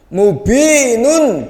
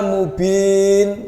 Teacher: Mubinun dibaca mubin, nunnya dimatikan.